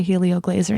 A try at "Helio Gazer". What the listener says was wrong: Gazer, not Glazer.